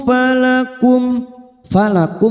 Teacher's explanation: mim sukun bertemu Hamzah kita baca jelas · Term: Idhar syafawi